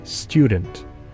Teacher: In rapid speech, the alveolar t assimilates to the palatal y and becomes palatal alveolar ch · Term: palatalization